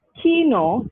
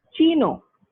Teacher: So in the Greek word, kino, just because the k sound, which is a velar stop, it occurs before the e sound, it becomes chino, which is a palatal stop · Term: palatalization